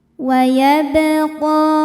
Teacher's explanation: Sebab huruf ba sukun, sukunnya sukun asli dan berada di tengah-tengah bacaan. Cara bacanya dipantulkan dengan pantulan yang kecil. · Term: qalqalah sughra